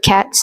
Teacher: in the word cats, the final S is voiceless because the T before it is also voiceless. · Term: Progressive assimilation